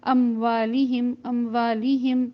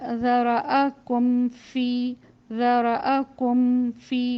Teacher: اچھی طرح سے میم کے مخرج پر پہلے حرف کے لیے ہونٹ کو بند کیا جائے گا اور دوسرے حرف کے لیے کھولا جائے گا